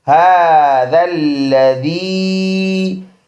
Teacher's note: یا مدہ 1 الف کی مقدار ہے، اس کا لمبا کرنا